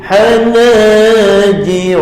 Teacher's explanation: Ha bertengah kerongkong, ha pedas.